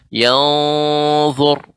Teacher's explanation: ikhfa pada huruf dha yang merupakan isti'la, maka dibaca dengan tebal